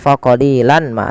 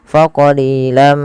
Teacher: setelah kita masukkan tanwinnya ke mim ditahan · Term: Idam bunah